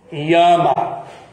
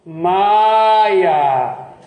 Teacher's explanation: Não são duas vogais, não pode ter. Então, o I se transforma no Y. Yama. E a vogal se torna consoante. E aí, como ela se tornou consoante, ela precisa de outra vogal para poder soar. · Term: semivogal